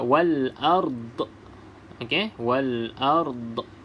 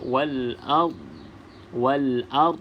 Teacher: berhenti pada wal ard ni, jangan lantunkan ya, sebab huruf dot ni bukan huruf qalqalah. Okey, huruf dot bukan huruf qalqalah.